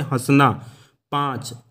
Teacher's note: इनका उच्चारण मुख और नासिक दोनों से मिलकर निकलता है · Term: अनुनासिक